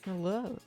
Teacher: I just know he says hello, like with the rising intonation.